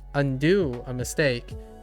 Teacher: when I undo something it's low high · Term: pitch accent